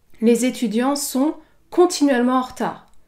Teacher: Vous notez également qu'il y a une légère pause devant la syllabe qui va être accentuée.